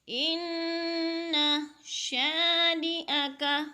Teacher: ان کی نون مشدد ہے، سختی سے پڑھیں گے، جمع کے پڑھیں گے اور ناک میں آواز لے جائیں گے، غنہ بھی کریں گے۔